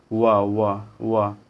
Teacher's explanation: ऊपर के दांत और निचला होंठ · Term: दंतोष्ट